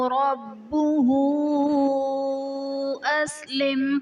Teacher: ربہ اسلم میں با حرف قلقلہ مشدد ہے تو یہاں پر قلقلہ خوب جماؤ کے ساتھ ادا کریں گے